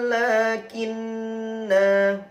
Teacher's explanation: Namun jika berhenti ( waqaf), lakinna, 'na' dibaca panjang.